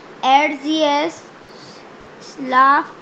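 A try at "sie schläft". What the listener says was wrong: schläft, तो ए उमलाउट है ना, उसका हमें प्रोनाउंसिएशन करना है। Okay, schläft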